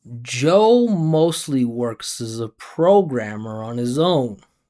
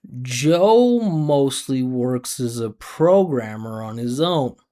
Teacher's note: all of the stressed syllables, all of the stressed vowels, you're going to hear the pitch go up.